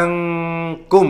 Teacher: karena ada nun sukun bertemu dengan huruf Kaf maka dibaca ikhfa samar-samar Hai suara non itu Hai berdengung